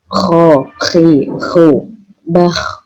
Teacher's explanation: Kalau kho itu kayak ada mendengkurnya gitu, ada ngorok